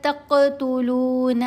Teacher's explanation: قاف کے اوپر کلکلا کیا جائے گا